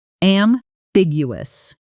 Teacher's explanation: The stress lands on the second syllable, and that middle section often gets mangled by learners trying to pronounce every letter.